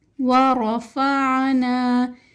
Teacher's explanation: را موٹے حروف میں سے ہے تو ہم اس کو موٹا پڑھیں گے۔ عین بھی موٹے حروف میں سے ہے تو ہم اس کو موٹا ادا کریں گے۔